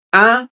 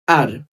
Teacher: আরটা দুইভাবে উচ্চারণ করতে পারি আমরা। আ এন্ড আর ব্রিটিশরা এটাকে আ উচ্চারিত করে। কিন্তু আমেরিকানরা আর উচ্চারিত করে।